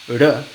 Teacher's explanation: Hace un contacto pequeño entre el ápice y la zona alveolar. Es un microcierre de la cavidad oral y hay control de la disposición de la lengua en dónde y en cómo toca. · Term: toquecillo